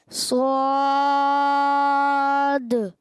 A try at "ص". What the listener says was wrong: اچھا اور گول نہیں کرنے, سواد نہیں, صاد.